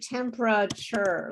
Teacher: when we say temperature we often reduce the sounds the number of syllables